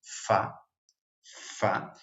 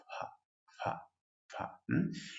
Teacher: un suave sonido labiodental, donde levemente los dientes superiores intentan ir hacia los labios inferiores, como cuando pronunciamos fa fa, pero muy, muy suavemente.